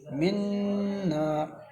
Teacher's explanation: من کے نون پر ادغام مع الغنہ ہوگا کیونکہ نون ساکن کے بعد حروف ینمو کے 4 روح میں سے نون آیا ہے۔ نون کو سختی اور جمعوں سے پڑھیں گے، نون مشدت ہے۔ · را کو باریک پڑھیں گے کیونکہ را کے نیچے 2 زیر ہیں